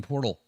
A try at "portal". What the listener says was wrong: It's funny because every time you were saying it sounded like you were saying porthole instead of portal.